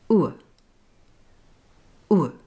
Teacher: Did you notice my lips changing shape from round to neutral?